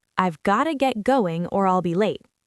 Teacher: Focus on blending got to get going smoothly, not saying each word separately.